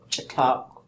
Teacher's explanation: when you see cha and tak, they tend to sort of run right into each other